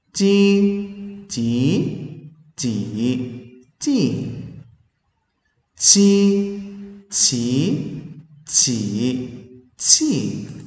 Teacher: âm này phải bật hơi này nhá, âm này bật hơi